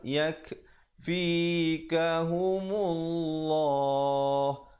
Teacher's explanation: Dan lafzul jalalah, perkataan Allah datang sebelumnya baris dhammah, iaitu baris depan dibacakan tebal